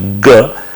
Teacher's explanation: where you can see a constriction at a velum, but during the constriction also the vocal folds will vibrate. So they are known to be mixed excitation and all.